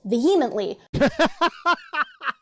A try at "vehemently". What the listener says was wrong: I think you have the wrong emphasis on the wrong syllable.